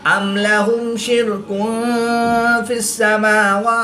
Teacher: دو پیش کی تنوین کے بعد حرف فا ہے تو یہاں پر اخفا ہوگا، یعنی غنہ زمانی کر کے پڑھیں گے